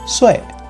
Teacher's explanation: since this is a 4th tone, the sound is pretty similar to if you angrily shout at someone. So it's like, hey, or like, bro.